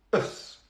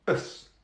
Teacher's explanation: Let's start with the last syllable, and that is us. There's a schwa.